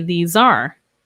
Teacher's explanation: this ends in the Z sound, these, which links to our A.